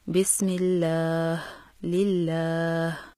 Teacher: لفظ جلالہ اللہ کے لام سے پہلے زیر ہو تو لفظ جلالہ اللہ کے دونوں لام ہمیشہ باریک پڑھے جاتے ہیں